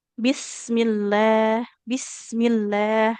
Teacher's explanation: Sinnya jangan terlalu terburu-buru ya. Sempurnakan dulu sifat mengalir suara di huruf sinnya.